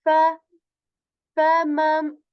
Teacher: tip of the upper teeth, it touches the lower lips and air is removed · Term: Fa letter